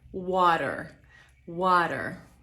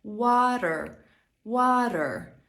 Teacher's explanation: to t w słowie Water w American English to jest Flap te Brzmi ono mniej więcej jak miękkie d albo nasze polskie r